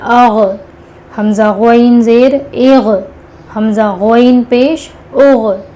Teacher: غین اور خوا، گین اور کھا نہیں بولنا ہے. غین اور خوا یہ حلق کے منہ کے جانب والے حصے سے ادا ہوگا